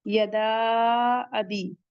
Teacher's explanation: अब बा के बाद का या मद्दा है, इसे भी 2 काउंट पढ़ेंगे